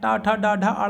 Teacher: मूर्धन्य में क्या होता है? जो जीभ होती है वो थोड़ी सी पीछे की तरफ क्या होती है? वो मुड़ती है।